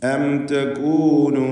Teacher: സാക്കിനത മീമിന് ഇൽഹാർ ഷഫവി നൽകി മണിക്കാതെ വെളിവാക്കി ഉച്ചരിക്കേണ്ടതാണ്.